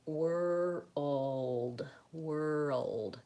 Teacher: World, you have to make sure you have that L sound. And a lot of times we put like a little bit of a schwa sound before it.